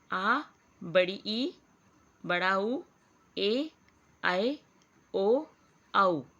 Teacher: ऐसे स्वर वर्ण जिनके उच्चारण में ह्रस्व स्वर से 2 गुना समय लगता है दीर्घ स्वर कहलाते हैं।